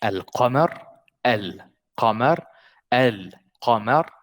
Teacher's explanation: if you listen to me saying it, I said the lam completely.